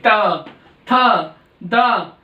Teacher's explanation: दंत्य वर्ग में तय वर्ग के शब्द आते हैं, अक्षर आते हैं जो दांत में लग जाए, हमारी जीभ दांत से लगेगी तो बोले जाएंगे।